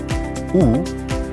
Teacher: U is a high back rounded vowel.